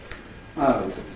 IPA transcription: ɐʊ